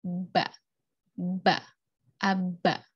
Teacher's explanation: jadi melibatkan bibir atas dan bibir bawah untuk mengeluarkan bunyi Mbah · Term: bilabial